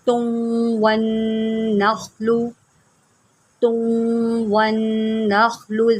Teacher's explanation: تا کو پہلے واو کے ساتھ ملا کر گنا کریں، یہاں پر ادغام ہو رہا ہے